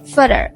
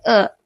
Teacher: For example, the word further is often pronounced as further. Where the second vowel is reduced to a softer sound like uh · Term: vowel reduction